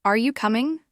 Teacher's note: For example, in yes-no questions like, "Are you coming?" the intonation should rise at the end